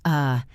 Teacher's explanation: This is the most common sound in the English language, but it is never written in the alphabet. It sounds like a very short weak uh sound. It is the sound of a relaxed mouth. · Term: schwa